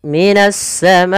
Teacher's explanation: Karena datangnya huruf hamzah setelahnya, maka dia menjadi 4 harokat dan biasa ditandai dengan tanda yang seperti ini. Ini kita memanjangkan untuk hukum tajwid mad wajib muttasil sepanjang 4 harokat atau 5 harokat